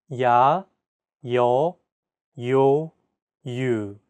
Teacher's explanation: there are also iotized vowel sounds in Korean this simply means that there's an added Y sound